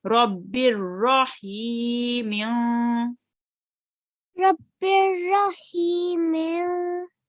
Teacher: I could hear the ha sound from your throat.